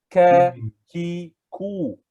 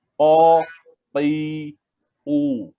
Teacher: Kalau kaf dia nipis, ka, ki, ku. Tapi qaf di belakang.